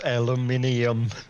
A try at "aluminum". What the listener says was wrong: You guys are adding an extra I in the middle of it.